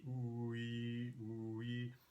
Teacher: But notice when you move from oo to e, ooh, ee, ooh, ee, if you just, I know it's a horrible idea to watch my lips, but ooh, ee, if you watch my lips spread when I make e instead of ooh, they're rounded when I make ooh, but not when I make e.